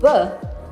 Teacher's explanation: dia adalah bunyi konsonan, hambat, bilabial, bersuara, kebalikan dari bunyi ep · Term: bunyi b